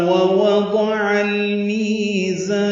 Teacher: دونوں واو ہونٹوں کی نا تمام گلائی سے ادا کریں گے، عین وسط حلق سے ادا کرتے ہوئے لام سے ملا دیں گے، اظہار قمری ہوگا.